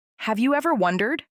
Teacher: The voice rises on wondered. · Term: rising tone